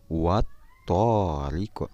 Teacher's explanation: alif lam bertemu dengan huruf tho bacaannya huruf lam nya tidak jelas atau dilebur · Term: lamnya dilebur